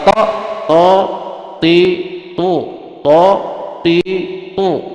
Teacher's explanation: Ta ini to ke atas. Makhrajnya kalau to kan ujung lidah nempel ke gusi, gigi, gusi gigi. To, tapi dia ke atas.